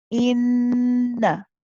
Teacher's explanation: Noon mushaddad, remember we say is akmal gunna, or it is it has a long gunna. In that part you hold. Inna, and then the na is only one count at the end.